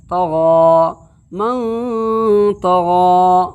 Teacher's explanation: نون ساکن کی آواز کو ناک کے بانسا کے اندر میں چھپا کر کے ایک گنہ کے ساتھ ایک الف کے برابر ادا کریں گے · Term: اخفاء حقیقی